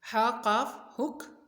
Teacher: قاف کی بھی آواز موٹی ہوگی، حلق سے نکلے گی۔